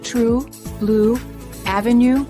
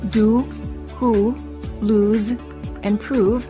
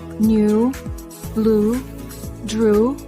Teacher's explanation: the tongue is slightly tense and raised high